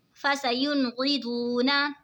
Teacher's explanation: فَسَيُنْغِضُونَ फसयुनक़िदूना, यहाँ पे देखिए जी नून साकिन है, नून साकिन के बाद हुरूफ़े हल्की का ग़ैन आ रहा है तो इज़हार होगा यानी गुन्ना नहीं करेंगे। वाव साकिन से पहले पेश है तो वाव मद्दा होगा, इसीलिए इसको खींच के पढ़ेंगे